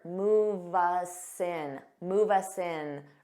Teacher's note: native speakers commonly link our sounds together so you could see this with move us in it may sound like one word